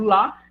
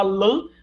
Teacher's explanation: Se eu falar lá, né, o advérbio lá, e se eu falar lã, a única alteração é porque uma é oral e a outra é nasal